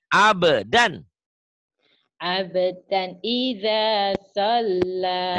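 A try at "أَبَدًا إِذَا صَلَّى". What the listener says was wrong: Jangan buru-buru tasdidnya Bu.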